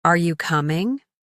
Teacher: Your voice goes up at the end.